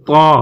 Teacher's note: এখানে জিহ্বার আগা উপরের দাঁতের গোড়ার সাথে লাগিয়ে উচ্চারণ হবে